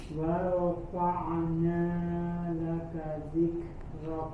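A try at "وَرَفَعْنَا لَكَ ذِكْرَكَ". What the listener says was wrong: Ya, huruf ain dia mengalir suaranya tanpa dipantulkan, bukan wa rafa'na jangan dipantulkan tapi dialirkan saja.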